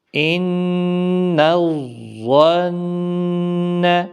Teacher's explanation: ظا حروف مستعلیہ کے ہے، موٹا پڑھنا ہے